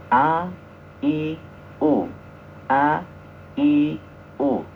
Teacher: jadi membaca huruf A itu harus jahr syiddah ya istifal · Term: Hamzah